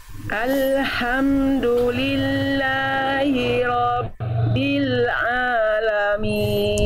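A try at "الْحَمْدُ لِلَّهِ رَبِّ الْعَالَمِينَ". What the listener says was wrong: sekali lagi bagus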